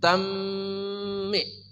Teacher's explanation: Dibaca memasukkan suara tanwin ke dalam mim dengan dengung. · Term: idgham bi gunnah